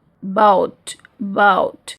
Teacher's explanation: So here sound starts from central position and moves towards U.